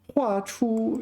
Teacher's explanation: So when used as meaning a stroke in a Chinese character, it's fourth tone.